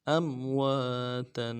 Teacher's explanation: واو کے بعد الف مدہ ہے، ایک الف مقدار میں کھینچیں گے